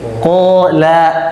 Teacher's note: Ko-nya tertahan, la-nya terbuka.